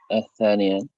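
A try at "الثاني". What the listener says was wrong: Al-thani. Jangan al-thaniyan ya. Kalau sudah pakai alif lam nggak boleh bertanwin. Al-thani.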